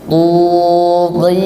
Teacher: Makhraj huruf ta itu ujung lidah bertemu dengan pangkal gigi seri atas. · Oke, huruf ta itu sifatnya isti'la dan itbaq. Yani ketika mengucapkan huruf ta itu tebal, ditebalkan suaranya, bukan tipis. Tapi tebal, pangkal lidah naik plus tegang. Tengah lidah juga naik.